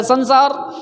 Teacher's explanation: क्योंकि इसका नाम है दंत स। जब हमारा जुबान दांत में टच करता है तो दंत स का निर्माण होता है